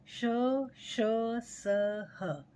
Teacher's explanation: इसके साथ ही 4 वर्ण श, श, स, ह इन्हें हम संघर्षी या ऊष्म व्यंजन कहते हैं, क्योंकि जब हम इनका उच्चारण करते हैं तो हमारी जो हवा है वो कुछ संघर्ष करती हुई, कुछ ऊष्मा के साथ निकलती हुई सी प्रतीत होती है